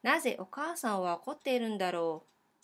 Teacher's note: So no becomes ん and then we just remove か and we use the rising intonation.